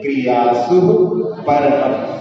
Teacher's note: का और रा के बीच में कोई स्वर नहीं है, इसलिए वो भी संयुक्त अक्षर है। तो स्वस्तिक क्रियासु परम, और सु में भी जो है विसर्ग है, तो सुह यानी वहां पे श्वास को छोड़ दे, थोड़ी देर का एक हल्का सा कौमा जैसा वहां पर हो जाए।